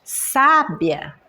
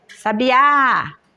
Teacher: mais forte dessa palavra quando eu pronuncio é o o primeiro a primeira sílaba sábia e depois sabiá é a última sílaba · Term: sílaba mais forte